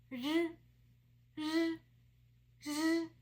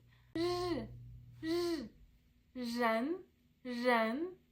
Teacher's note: So your tongue curls back to the palate when you pronounce this sound.